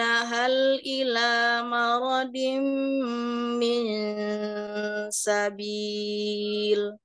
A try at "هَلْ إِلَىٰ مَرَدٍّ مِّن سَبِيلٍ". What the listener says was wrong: Afwan ila maradim dalnya bertasydid ya.